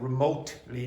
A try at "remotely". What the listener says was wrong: Yeah, that's a bit better, but the t needs to be a bit stronger.